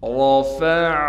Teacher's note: خلقا ام السماء بناها، رفع، را کو موٹا کر کے پڑھنا ہے، عین کو صاف کر کے گلے سے نکالیں گے